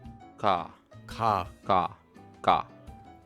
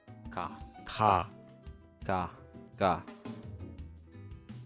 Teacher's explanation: This sound is between a K and a G in English.